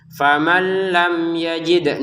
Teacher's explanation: Nun sukun bertemu lam ya masukin tanpa dengungan. Lam bertemu ya dibuat dengan dibaca dengan jelas.